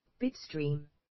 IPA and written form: ˈbɪtˌstriːm (Bitstream)